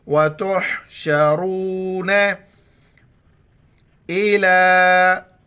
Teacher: وتحشرون الا، یا پڑھا نہیں جاتا ہے، لام کے اوپر کڑا زبر ہے، ایک الف کی مقدار کھینچیں گے